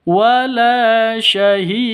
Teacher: harus dipantulkan ke huruf dalnya Qalqalah Apa karena ada di akhir kalimat maka disebut dengan Qalqalah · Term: Qalqalah Kubro